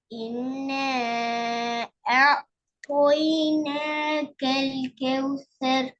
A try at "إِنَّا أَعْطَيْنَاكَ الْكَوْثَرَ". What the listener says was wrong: 3 second நீட்டது போத second நீட்டல அங்கதான் பிரச்சனை. திருப்பி தையிட்டு போகுது. அவசரப்படலாம் கேளுங்க. அவசரப்படாம நிதானமா முதலாவது நீட்டினீங்களான்னு யோசிங்கோ. நீட்டினதுக்கு பின்னால அப்படி இங்க வாங்கோ. திருப்பி தாவ சரியா உச்சரிச்சு நல்லா வாய்ப்புள்ள அடுத்து உச்சரிச்சு மெதுவா போங்க. ஓட வேணாம். நீங்க ஓடுறதா உங்களை ஓடுது அவசரமா பெரியா போகுது.